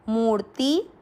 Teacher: मूर्ति शब्द मुंह को खींचना है और आधे र को साथ पढ़ना है